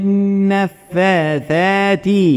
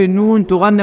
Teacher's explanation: النون تغنى مقدار حركتين